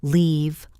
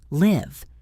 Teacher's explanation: Listen to the length of the vowel. Leave long. live short.